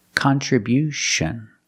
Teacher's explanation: We see at the end with t io n you hear the sound sh like she and shu.